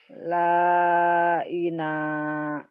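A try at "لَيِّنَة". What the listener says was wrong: Layina. Yi, bukan laina. Layina.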